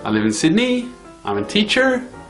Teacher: up talk is when people rise at the end of this sentence to say that they have more to say